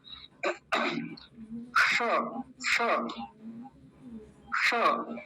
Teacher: किताबी भाषा में इसको बोलते मूर्धन्य सकार मूर्धा से उच्चारण होता है इसका · हमारी जीभ बिल्कुल ऊपर जाके लगेगी, सबसे ऊपर। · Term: मूर्धन्य शकार